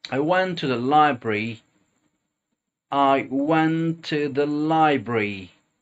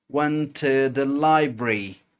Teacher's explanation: That's because went finishes with a T and the next word begins with a T. So we're actually just going to pronounce one T, kind of merge them together.